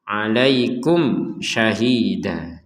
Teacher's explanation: ada mim sukun dilihat setelahnya ada syin maka dibaca dengan jelas